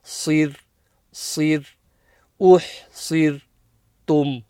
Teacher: The sa here is always full mouth, but because it's joining the ra with the kasra, the ra becomes empty mouth.